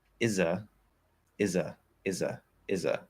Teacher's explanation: if you remove the th you're just left with uh which might be interpreted as a